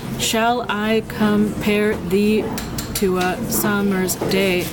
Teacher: Shall I compare thee all stressed, which brings a lot of stress to this idea of comparing thee